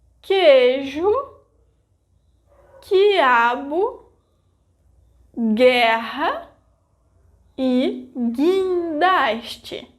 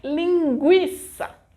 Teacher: when there is a syllable formed by gi, ge, ki, ke, the vogal U disappears phonetically. There are some words that are exceptions for this rule, like linguiça.